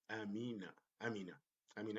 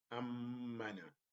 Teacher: Here, ammana, like two syllables. Ammana, as if I am having two M's, but in reality I have one, but the stress on the shadda makes it like two M's